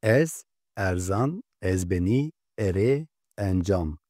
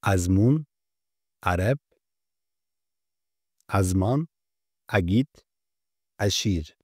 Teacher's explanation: E harfi Türkçe E gibi açık okunurken buna karşılık azmun, arep, azman, agit, aşir kelimelerinde ise E Arapçadaki ayn sesi gibi çıkarılır. Bu ses genellikle kelimelerin başında görülür. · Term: açık E